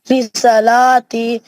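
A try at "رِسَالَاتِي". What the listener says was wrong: रिसालाती नहीं, रिसालाती, सीन को भी खींचो।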